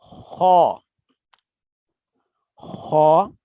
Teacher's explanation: خو، خو، یہ بھی حروف حلقی ہے. ادنا حلق یعنی حلق کے اوپر والے حصے سے خو ادا ہوتا ہے